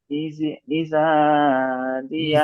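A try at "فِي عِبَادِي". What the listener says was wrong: ইজা নয়, এখানে বা রয়েছে, ইবাদি,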